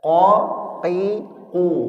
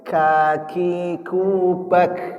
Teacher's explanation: Qof itu di sini pangkal lidah qo, qi, qu dia tidak mengeluarkan hawa. Beda dengan kaf. Kaf itu mengeluarkan hawa.